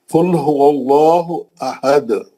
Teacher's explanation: اگر آپ روک دیے تو تنوین ختم ہو جاتی، انہیں دال کو ساکن کر دیا، تنوین ختم، وہ نون ساکن ختم.